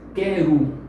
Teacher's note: E até mesmo essa letra O, representada aqui no final da palavra quero, soa como u